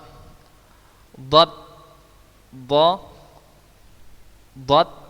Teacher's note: Dad, dad itu makhrajnya, tempat keluar hurufnya adalah geraham kiri kanan dengan lidah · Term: huruf dad